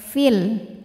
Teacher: panjang dua harakat Fi namun dibaca panjangnya hanya saat berhenti saja Kalau diteruskan madnya gugur fnya dibaca pendek fil namanya takhalus bilhfi Kenapa karena ada pertemuan dua huruf sukun